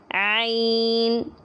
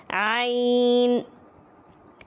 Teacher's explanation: اس کو حلق کے درمیان سے ذرا دبا کر زور لگا کر نکالنا ہے